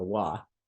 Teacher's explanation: the difference between V and W there isn't one